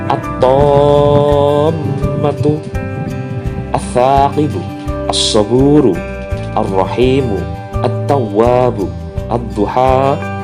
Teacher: lamnya tidak terbaca, tidak ada harokat pada huruf lam, dan huruf setelah lam bertasydid, ada tasydid setelah huruf lam. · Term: idgham syamsiyah